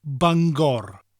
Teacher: We emphasise the R in Welsh though.